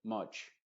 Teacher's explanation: esa a es muy abierta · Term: sonido modificado de la u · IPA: /ʌ/